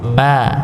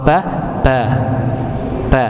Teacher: bibir syafatan ya dua bibir yang bertemu ya Ma ba tapi bedanya kalau Ma keluar dari hidung kalau BA tidak